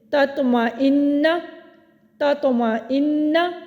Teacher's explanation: ہم نے وقف نہیں کیا بلکہ کلکلہ ادا کرتے ہوئے ہم اگلے حرف پر چلے گئے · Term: کلکلہ صغریٰ